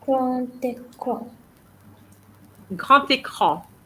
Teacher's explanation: the liaison between the grand and écran. And when you have the D changes into a T, okay? Grand écran and not grand écran as I heard before, okay?